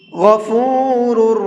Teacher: غین کو منہ بھر کے پڑھیں گے، اور اس کے بعد میں 2 را ہیں، دونوں را کو منہ بھر کے پڑھیں گے